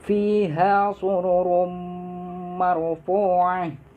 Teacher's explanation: Di sini ada hukum bacaan antara tanwin bertemu dengan huruf mim, yaitu hukum bacaannya idgham biguna. Dengung.